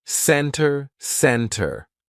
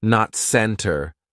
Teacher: It sounds like there is no T at all. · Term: silent T